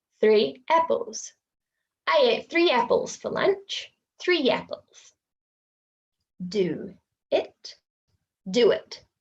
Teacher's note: so we've got a secret W going in there